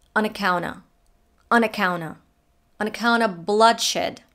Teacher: links N in the on to the A in the account, drops the T in the account. Links the N to the of, which is contracted to just aw.